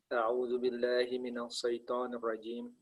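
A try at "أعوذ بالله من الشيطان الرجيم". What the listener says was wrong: Shinnya agak tebal. Hi minasyaiton. Kan dia bertasydid.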